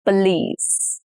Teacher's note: The stress is on the last syllable, which is lease.